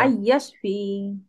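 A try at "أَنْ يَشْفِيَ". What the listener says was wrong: ফিয়া, জবর হয়ে যাবে শেষে।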